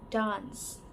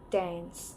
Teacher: in British, the A in dance is often pronounced as A in the father.